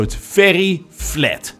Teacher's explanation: the a in a word like flat becomes e